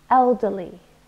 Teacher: three syllables also stressed the first one elderly and it means old it's an adjective but it refers